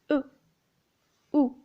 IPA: ʊ